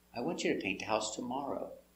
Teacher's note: It's affirmative. The intonation goes down at the end.